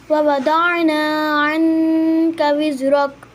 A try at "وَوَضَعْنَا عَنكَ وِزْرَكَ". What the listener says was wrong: وضعنا میں ضاد کو موٹا کریں اور عن کا پہ آپ نے غنہ ٹھیک کیا ہے، لیکن عن کا کے بعد رک را کو موٹا کرنا ہے. ووضعنا عنك وزرك